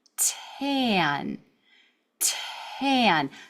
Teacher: I'm going to turn my voice off and then turn it on at the vowel. tan tan. So, I'm really having to be breathy while and just before turning on my voice.